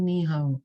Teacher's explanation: the third tone is it goes down and goes up